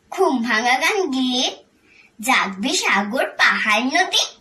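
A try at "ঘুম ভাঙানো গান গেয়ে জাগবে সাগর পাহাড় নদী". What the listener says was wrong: যে উচ্চারণে হয়ের উচ্চারণটা একটু ঠিক করতে হবে আর ওয়ের উচ্চারণটা একটু ঠিক করতে হবে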